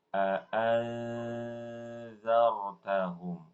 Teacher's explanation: Tapi suara ikhfa'nya a'anzartahum di ujung lidah.